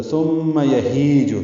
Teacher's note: ہی یا مدہ ہے، 2 حرکات لمبا ہے